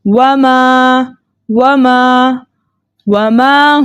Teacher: الف مدہ کو 2 حرکت کی مقدار کھینچ کر پڑھتے ہیں